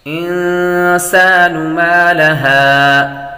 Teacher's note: نون ساکن کے بعد سین حروف اخفاء میں سے آ رہی ہے تو غنہ کریں گے۔